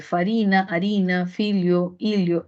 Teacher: la f que evoluciona a H que sabemos que no tiene sonido